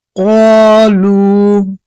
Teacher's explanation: ساکن سے پہلے پیش ایا ہو اس لیے وا مدہ ہوگا وا مدہ کو ایک الف کے برابر کھینچ کر پڑھے